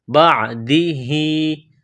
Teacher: کہتے ہیں۔ من بعدہ، با کو عین کے ساتھ ملانا ہے، عین گلے کے درمیان سے زور لگا کر عین کو نکالیں گے ، بعدہ، ہا کڑی زیر ہی، ایک الف کے لمٹ میں